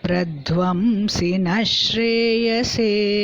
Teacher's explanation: The Visargam becomes Ish.